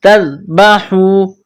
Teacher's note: حا یہ گلے کے درمیان سے نکلتی ہے